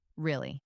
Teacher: If I say it flatly, really, it just means yes or I understand. But if I say it with a rise in intonation, really, it expresses genuine surprise.